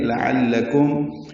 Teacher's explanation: لام باریک ہیں دونوں، عین وسط حلق سے ادا ہوا، کاف باریک